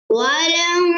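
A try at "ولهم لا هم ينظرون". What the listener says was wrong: लाम के बाद अलिफ है।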